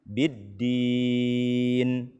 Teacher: tidak menyempurnakan bunyi nun sukun, atau terlalu cepat kita berhenti.